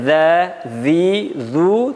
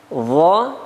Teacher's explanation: huruf za pengucapannya za, zi, zu tipis, dha tebal